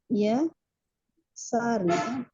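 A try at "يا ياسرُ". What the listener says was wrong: Yasirun. Mata ini ya. Ini bukan ya nida. Ini nama orang. Jadi Yasir.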